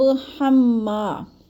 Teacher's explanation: ہم کی میم کو مشدد ہے، سختی سے جماؤ کے ساتھ پڑھنا ہے، اور ما کو تھوڑا سا کھینچنا ہے، الف مدہ ہے